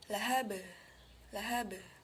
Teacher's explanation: setelah mengucapkan qalqalah untuk huruf ba, bibir kita wajib berjauhan